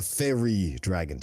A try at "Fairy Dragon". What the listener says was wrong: Not quite. You're putting a little too much emphasis on the Fey part of it. Fairy Dragon.